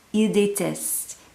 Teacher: And then when we get down to the they plural, il, elle déteste. Here you cannot hear the difference between he hates or they hate.